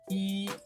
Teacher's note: out which tones to say in which situations when saying e when counting or saying e by itself you should say the first tone